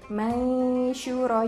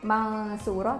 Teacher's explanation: Contohnya pada kalimat mansyura. Nah, ini shin itu kan punya sifat tafashi ya, atau bergemuruh di dalam lidah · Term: ikfa